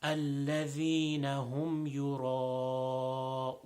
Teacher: So over here, ra, because it has a fatha, otherwise known as a zabr, it will be a full mouth. And also this mad over here is a little bit longer than the shorter mads.